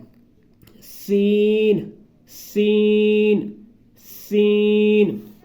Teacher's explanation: سین سیٹی کے ساتھ، جیسے کہ وہ سیٹی وغیرہ بجاتے ہیں